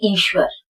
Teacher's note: श्वर जब हमको बोलना होता है तो गोल मुंह हमारा होता है, वहां पर हमको लिखना होता है W।